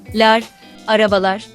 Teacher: the final vowel of araba, meaning car, is the back vowel a